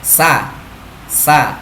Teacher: Hamas artinya nafas terlepas. Sa itu ketika kita membunyikan nafas kita terlepas, tidak tertahan. Yang ketiga memiliki sifat ismat, cara membunyikannya lambat. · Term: sifat hamas